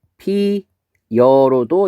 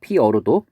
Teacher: 피다, 피고, 피어 이렇게 돼 있을 때 요 용언의 어간에 모음으로 시작하는 어미가 결합될 때 모음 충돌을 막기 위해 반모음 이가 덧붙는 현상. 그래서 피어라고 했을 때 여기 용언의 어간, 모음으로 끝난 어간이고, 그 다음에 모음으로 시작하는 어미가 붙어서 얘는 발음이 피여로도 이제 발음이 된다는 거죠. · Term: 반모음 첨가